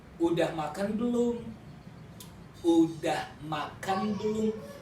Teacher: Usually, in daily speaking, Indonesian people omit S sound, so they cut into udah.